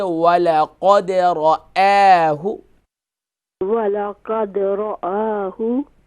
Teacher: وَلَقَدْ را جو ہے فل ماؤتھ ہوگا اور حمزہ جو ہے یہ لائٹ ہوگا، تو اسے پڑھیں گے وَلَقَدْ رَآهُ.